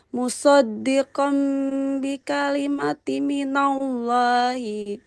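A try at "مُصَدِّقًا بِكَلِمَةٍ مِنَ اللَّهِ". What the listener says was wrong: Musaddiqam bi kalimatim. Ada mim bertasdidnya. Ditahan dulu. Musaddiqam bi kalimatim minallah.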